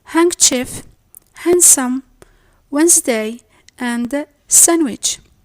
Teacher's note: A meeting between stop sound, which is the D sound, and the nasal N sound